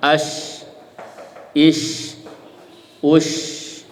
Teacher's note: Dan menyebarkan udara ini sekali lagi tidak dibantu oleh bibir, karena makhrajnya bukan dari bibir tapi dari tengah lidah. Biarkan aja dia ngalir normal. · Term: at-tafasyi